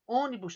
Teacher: a sílaba tônica é a antepenúltima